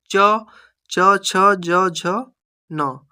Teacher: च छ ज झ न तो ये तालव्य ये तालु से स्पर्श हो के उनका उच्चारण होता है।